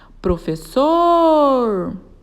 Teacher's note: oxítona é uma palavra que tenha última sílaba como sílaba tônica Ou seja a sua última sílaba é aquela que é pronunciada com mais força